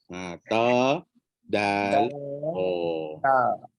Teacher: hujung lidah sentuh pangkal gigi atas